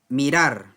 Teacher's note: ya no utilizamos doble r acá el sonido es suave